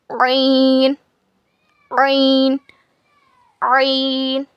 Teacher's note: हलक के बीच के हिस्से से ऐन अदा होता है। It is pronounced from the middle part of your throat.